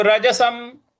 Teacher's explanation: र ज स के ऊपर जो अनुस्वार है उसका म उच्चारण करेंगे